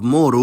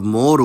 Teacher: the neuter noun mȏre has a dative form of mȏru, with falling pitch, but a locative form of móru, with rising pitch.